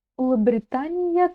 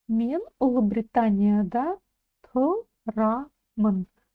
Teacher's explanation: Улыбритания, да. Ударение ставится на букву А в слоге да. Улыбритания, да, потому что, в принципе, ударение в казахском языке ставится на последний слог.